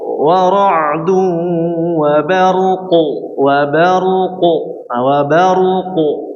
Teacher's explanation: Kalau misalnya berhenti pada wa barqu, konsekuensinya harus memperjelas qalqalah karena dia terjadi qalqalah kubro juga dan hurufnya tebal nih qalqalahnya. Jadi harus jelas.